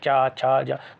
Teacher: ये आपका इसमें जीभ आपकी तालु में लगेगी, आप बोल के देखिए चा छा जा, तो जीभ दांत से थोड़ा सा अंदर की तरफ लगेगी तालु में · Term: तालु वर्ग, तालव्य